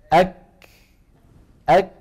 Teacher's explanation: فبدايه الكاف شديده نهايه مهموسه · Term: الهمس